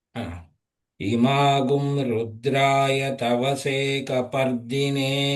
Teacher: తవసే ఉంది స్వరితం ఉంది దీర్ఘ స్వరితం లేదు కొద్దిగా ఎక్కువ ఎలాంగేట్ చేయొద్దు